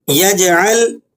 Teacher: جیم پر سکون ہے تو جیم کو آپ نے جلی آواز کے ساتھ اور اس طرح تھوڑا سا ہلا کے پڑھنا ہے تاکہ قلقلہ ادا ہو جائے۔